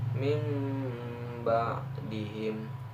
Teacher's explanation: membalik bunyi nun atau tanwin menjadi mim dengan sedikit merenggangkan dua bibir disertai dengan dengung selama 1,5 alif atau 3 harakat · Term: iqlab